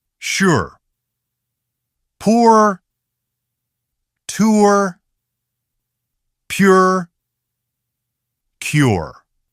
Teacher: There is a slightly rounded feeling from the beginning, and that rounded flow continues into /r/. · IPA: /ʊr/